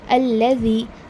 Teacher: آپ کی جو زبان ہے وہ 2 دانتوں کے بیچ میں آئے گی، فرنٹ پورشن جو ہوگا اسے سامنے لے کر آئے، اوپر کے دانتوں کو زیادہ ٹچ کرے گی، آپ کی جو زبان کا فرنٹ پورشن، سامنے والا پورشن جو ہوتا ہے، پیچھے کا نہیں، نیچے کا نہیں، اوپر کا، ذا۔